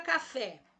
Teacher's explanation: eu descobri que a sílaba tônica da minha palavra café é a fé